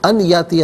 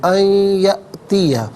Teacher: ناظرین یہاں پر آپ دیکھیں ان میں نون ساکن ہے، اسے یاتیہ کی یا کے ساتھ ملائیں گے، یا کی آواز کو غنّے کے ساتھ ادا کریں گے. ان یاتیہ نہیں، ان یأتیہ.